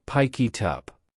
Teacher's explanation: notice that the K in pick attaches to the I in it, and the T in it attaches to the U in up.